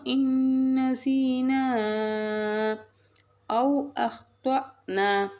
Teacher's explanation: வாவ் லீன் soft and குயிக்காக சொல்லணும்